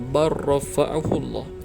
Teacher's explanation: Lam dimasukkan ke dalam huruf ra. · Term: idgham